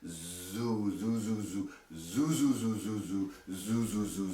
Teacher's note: But for our purposes, I want you to imagine that the oo sound is this big, round, dark sound